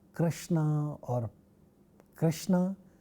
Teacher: ksha, which is a retroflex sound, and it appears in the words like Krishna